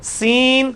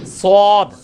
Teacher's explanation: سین کی آواز کو موٹا کیا, سواد بن گیا